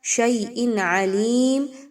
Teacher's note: حمزہ کے نیچے دو زیر کی تنوین کے بعد عین کا حرف ہے، آپ نے یہاں پہ اظہار کرنا ہے، کسی قسم کا غنہ نہیں ہونا چاہیے